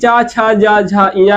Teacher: छा का उच्चारण स्थान तालु, जा का उच्चारण स्थान तालु, झा का तालु, इया का तालु। यानी कि चा, छा, जा, झा, इया का उच्चारण स्थान तालु है